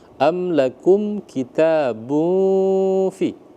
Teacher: Nah, jadi ee dia dibaca samar-samar, dibaca ikhfa ya.